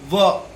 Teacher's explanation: दंतोष्ठम, दंत और ओष्ठ, व दांत और ओष्ठ दोनों की सहायता ली जाती है